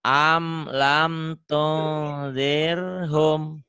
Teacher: Humnya idhar ya, jangan ditahan.